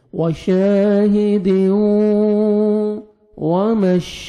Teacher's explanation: ہیں ان میں سے واو آ رہا ہے تو یہاں پہ آپ نے ادغام کرنا ہے غنہ کے ساتھ، نوز میں ساؤنڈ لے کے جائیں گے